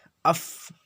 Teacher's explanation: اوپر کے دانتوں کا کنارہ نیچے کے ہونٹ سے مل کر فا ادا ہوتا ہے